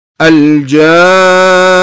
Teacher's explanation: حتى في نهاية الكلمة إذا وقفت على النون المشددة أيضا تأتي غنة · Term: الغنة